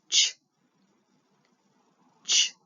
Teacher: CH is a t and a sh together so ch ch and then J is a d and a